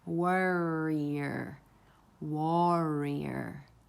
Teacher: you're going from a vowel, ah or aw, and then you're bringing in the R sound. So the tongue is coming up and retracting. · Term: diphthongs of R